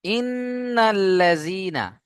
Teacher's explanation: নুনের উপরে তাসদীদ গুণনা করা ওয়াজিব